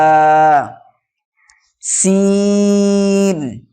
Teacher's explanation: জিভের আগা এবং সামনের উপর নিচের 2 দাঁতের আগার সাথে লাগিয়ে উচ্চারিত হয় সিন